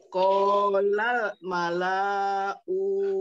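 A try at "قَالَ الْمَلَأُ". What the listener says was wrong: Kolal malau. Lanya pendek.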